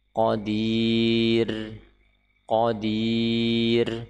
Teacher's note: ketika kita wakaf di sini maka ra dibaca tipis, qadir, karena sebelumnya huruf yang sukun dan sebelumnya kasrah.